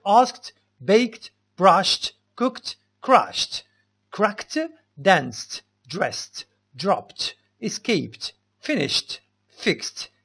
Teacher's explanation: هنا هاد الأفعال كاملين كنطقو ديك دي كنطقوها ت